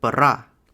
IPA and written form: pɐˈra (пара̀)